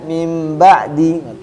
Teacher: maka bunyi nun sukun atau tanwin diganti bunyi mim sukun disertai dengung. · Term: iqlab